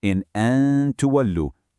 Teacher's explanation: In an tuwallu, that noon sakinah is followed by the ta. So, we apply ikhfa, hiding that n sound with a light nasal hum to seamlessly connect those two words